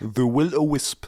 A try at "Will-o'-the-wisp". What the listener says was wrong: Will-O-the-Wisp. There's the in there.